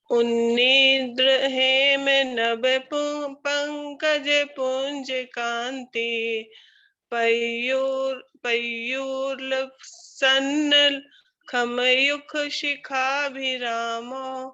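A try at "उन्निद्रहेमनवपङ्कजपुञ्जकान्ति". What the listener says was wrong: बहुत सुंदर।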